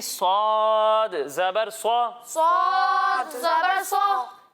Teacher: जब हम स्वाद की अदायगी करेंगे तो इसमें भी सीन की तरह सीटी की आवाज़ तो आएगी लेकिन इसे हम मोटा करके पढ़ेंगे क्योंकि ये हरूफ मुस्तालिया में से है।